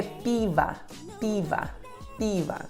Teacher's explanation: Você procura essa palavra e descobre que a sílaba tônica é a primeira, pi. O que acontece com a segunda sílaba, com o som O, ele se torna A.